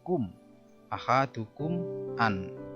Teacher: Di sini mim sukun ketemu alif. Itu disebut dengan idhar safawi. Jelas di bibir. Cara bacanya jelas di bibir.